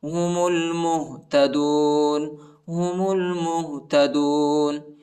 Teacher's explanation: میم کو لام کے ساتھ ملائیں گے، الف نہیں پڑھا جاتا، الف پر حرکت نہیں.